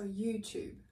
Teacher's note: the way we say youtube in british english is with the chu sound just like you would say in the word choose